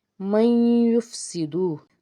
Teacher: نون ساکن کے بعد یا آئے تو ادغام کا قاعدہ ہوگا، آواز کو ناک میں چھپائیں گے